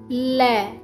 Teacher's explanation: पार्श्विक, जिसमें जीभ की नोक मसूड़ों को छूती है।